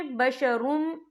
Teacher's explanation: یہ دیکھیں بشرم، یہاں را کے پر تنوین ہے، تنوین کے بعد جو ہے میم آ رہا ہے، اور میم جو ہے حروف یرملون میں سے ہے، تو یہاں پر ادغام ہوگا، تو ہم اسے غننے کے ساتھ پڑھیں گے